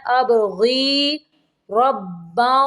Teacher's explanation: ابغی با کو کلکلا کرنا ہے